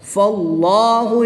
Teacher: اس میں جلالت اللہ عز و جل کے لام سے پہلے حرف پر زبر ہے تو اس کو پر یعنی موٹا پڑھیں گے